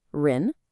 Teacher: the second part ren goes up almost like they're asking a question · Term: rising second tone